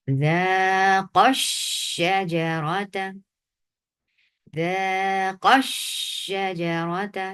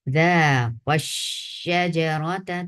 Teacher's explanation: جب قاف کو شین کے ساتھ ملا رہے ہیں تو آپ اس کو نبر کریں۔ اگر بغیر نبر کے پڑھا جائے تو واحد انسان کا چکھنے کا واضح ہوتا ہے۔